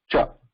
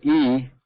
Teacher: there is a full stop the air is being blocked there whereas for e when we are saying e the air is not being blocked the air is airfield freely passes through so